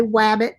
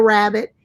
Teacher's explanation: a student says like w for r so they say wabbit instead of rabbit